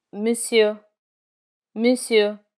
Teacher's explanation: In monsieur, the final R is never pronounced.